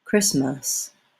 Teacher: Be careful to avoid using a vowel that sounds more like the letter A. The letters H and T are silent in the word Christmas.